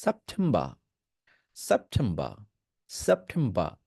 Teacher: ব্রিটিশে কোন শব্দের শেষে আর যদি থাকে ব্রিটিশ এক্সিডেন্টে সেটা রিডিউস থাকে মানে সাইলেন্ট করে দেয় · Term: ব্রিটিশ অ্যাকসেন্টে, ব্রিটিশ অ্যাকসেন্ট